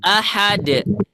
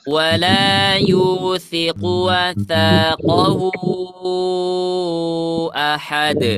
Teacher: ketika kita waqaf dia menjadi sukun. Sementara huruf dal sifatnya ada qalqalah, maka dia muncul.